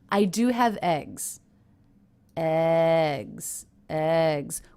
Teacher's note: the word eggs even though it's a content word a noun which is usually stressed doesn't have that much stress I notice because it's at the end of a sentence I